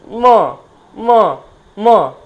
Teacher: ম এর উচ্চারণ দেখুন ঠোটে বাড়ি খাচ্ছে সাথে কিন্তু নাকে ভাইব্রেট হচ্ছে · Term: অষ্ঠ বর্ণ